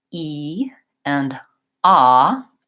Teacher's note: when I go between the two E and AH I can really feel okay high front and low back